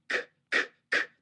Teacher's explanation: that's a k sound in English and there's no voicing ckk you don't hear my vocal cords